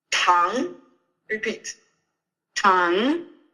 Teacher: remember to push the air through and to really do this rising intonation. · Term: second tone